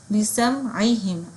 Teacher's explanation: بِسَمْعِهِمْ عین کا مخرج. عین ادا ہوتا ہے ہمارے حلق کے بالکل درمیان والے حصے سے